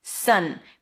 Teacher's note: It's an S sound, a cup, it's like a stressed schwa, and an N sound.